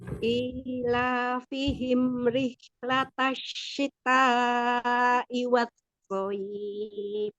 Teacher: Tasdidnya di shin bukan di ta ya.